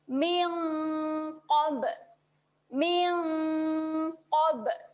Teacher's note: Bunyi dengungnya seolah-olah kita tambah bunyi NG. Kerana huruf qaf huruf tebal dan hurufnya merupakan huruf pangkal lidah.